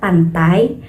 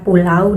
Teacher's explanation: walaupun terdiri dari dua vokal, pengucapannya itu tidak terpisah, melainkan menyatu dalam satu bunyi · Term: bunyi diftong